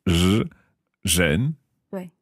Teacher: what I'm doing to make that sound is basically saying a z, but I'm taking my tongue backwards in my throat.